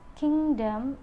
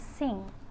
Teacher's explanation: Ng is voiced velar nasal. For the initial, there is no initial for this sound.